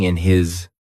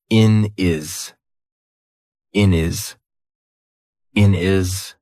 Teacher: We've taken away that H completely, and we've made it into one word. · a lot of the time in the UK we will drop our H.